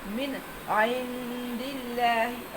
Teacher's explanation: اور اللہ کلام باریک پڑھنا ہے